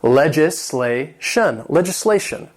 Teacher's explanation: This has four syllables and the stress is on that third syllable.